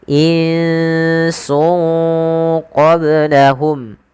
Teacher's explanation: Cara membacanya itu menyamarkan suara tanwinnya atau suara nunnya ke huruf setelahnya. Maka nun yang di sini kita samarkan ke huruf sin, sungnya ke huruf qaf. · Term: ikhfa, Ikhfa